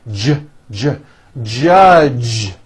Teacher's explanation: the J sound in American English is always voiced